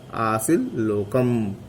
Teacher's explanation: त के बाद ल हो तो वो त का ल हो जाता है। जैसे एक शब्द है आसित लोकम, आसित लोकम, आसित में त है और उसके बाद आता है लोकम, त के बाद ल आता है, त का स्थान पे ल हो जाएगा तो बन जाएगा आसिल लोकम।